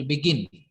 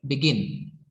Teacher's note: बिगिन जे आहे याच्यामध्ये काय केलं जातं तर ग वरती जोर दिला जातो. बिगिन ज्यावेळी मी उच्चारतो त्यावेळी तुम्हाला ग हा साऊंड जास्त मोठ्यानं आवाज आलेला दिसेल किंवा तुम्हाला ऐकायला येईल मोठ्यानं आवाज.